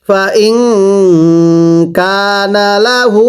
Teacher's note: এই হায়ে জমিরের মধ্যে 3 আলিফ টানতে হবে। হায়ে জমিরের উপরে চিকন চিহ্ন, এরপরে লম্বা হামজা থাকলে 3 আলিফ টানতে হয়।